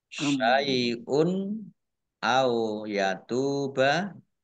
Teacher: Domah tanwin bertemu dengan huruf alif, bacaan izhar dibaca jelas